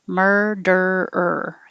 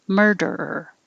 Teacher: keep your tongue curled back in the r position the whole time